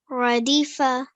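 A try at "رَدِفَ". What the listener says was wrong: Brilliant. Well done. Excellent.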